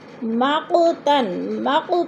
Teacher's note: مقو پہ جو ہے قلقلہ ہو رہا ہے، قاف حروف قلقلہ میں سے ہے